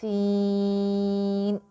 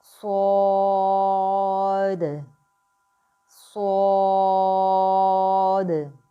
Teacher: سین، اس letter میں ہم نے باریک سیٹی کی آواز نکالی تھی۔ صاد، اس میں ہم موٹی یعنی کہ پر سیٹی کی آواز نکالیں گے۔